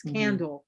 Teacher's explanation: And the L at the end of the word is almost an oo.